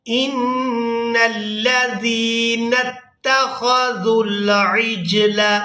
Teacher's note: نون مشدد پر غنہ کریں گے، نون کو لام مشدد کے ساتھ ملائیں گے